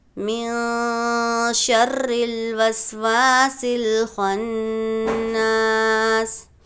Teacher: جب بھی تنوین یا نون ساکن کے بعد اخفا کے ان 15 حروفوں میں سے کوئی بھی حرف آتا ہے تو نون کی آواز کو ہم ناک میں چھپا کر پڑھتے ہیں